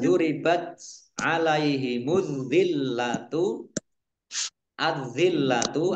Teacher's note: alif lamnya tidak dibaca, langsung masuk ke huruf berikutnya yaitu zal, ditandai zalnya ada tasdidnya, zalnya dibaca dobel. Kemudian lamnya juga dibaca dobel, ada tasdidnya. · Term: alif lam samsiah